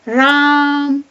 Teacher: जब हम पुकारने के लिए उसका प्रयोग करते हैं तो उस स्वर को खींच दिया जाता है, लंबा कहा जाता है, राम। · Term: प्लूत स्वर